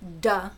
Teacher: you make it the oral stop duh which is voiced and alveolar